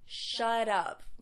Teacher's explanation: making the T of shut into a D because it does come between two vowels and it all blends together into shut up.